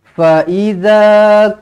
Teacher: juga kedua-dua pendek Fa jangan fa fa Tak nak macam tulah Fa pendek I pendek Za baru panjang